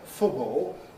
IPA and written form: ˈfʊbɔːo (football)